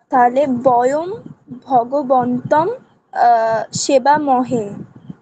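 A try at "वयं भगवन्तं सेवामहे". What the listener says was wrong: ঠিক, বয়ম ভগবন্তম সেবামহে, ঠিক।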